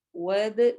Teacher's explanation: ود دال پہ پھر کلکلا ہوگا کیونکہ دال پہ سکون ہے